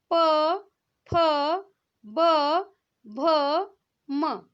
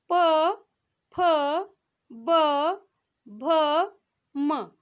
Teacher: आप जब ये उच्चारण कर रहे होंगे तो आपकी दोनों जो होंठ है एक दूसरे से स्पर्श कर रही होगी। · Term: ओष्ठ व्यंजन